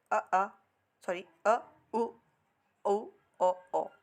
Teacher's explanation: पश्चात स्वर जो जीव के पिछले भाग से होता है